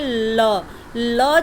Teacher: ल जब बोल रहे हैं तो वो जीभ क्या कर रही है, ऊपर वाले दांत को टच कर रही है